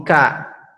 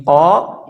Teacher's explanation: huruf kaf seperti makhraj huruf qaf ya. Namun pangkal lidah diturunkan. Pangkal lidah diturunkan.